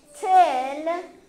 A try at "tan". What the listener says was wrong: Is that the word tan? No. What vowel do you hear in tant? Tan. So find one that's a T and what letter? What vowel are you looking for? Okay, so find a T and an A.